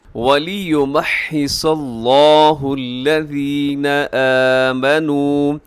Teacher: اس میں لفظ اللہ کو موٹا پڑھیے گا، اور اس کے اندر جو حرف صاد ہے وہ بھی آپ نے موٹا پڑھنا ہے، اور باقی جتنے بھی ہیں وہ سب باریک پڑھیے گا۔